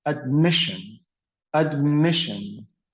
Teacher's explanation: so the stress was on the second syllable